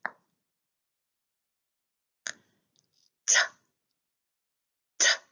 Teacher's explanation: We use the tip of the tongue behind the front teeth.